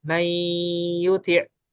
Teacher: di sini nun ini hilang, tapi sifat gunnahnya masih ada. Jadi suara yang ada di hidung itu masih ada. Nah, itu namanya idgham naqis.